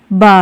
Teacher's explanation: इसका उच्चारण स्थान ओष्ठ है यह अल्प प्राण है और घोष वर्ण है